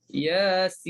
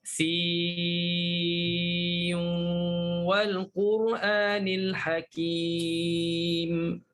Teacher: Bertemu dengan huruf waw. Maka bagi Syu'bah, masukkan nun dalam waw. Yasin. Berdengunglah. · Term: idgham